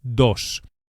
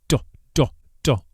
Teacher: The Spanish D is actually softer than in English and is produced with the tongue flat against the gum ridge, against the top of the mouth, not the tip of the tongue as in English.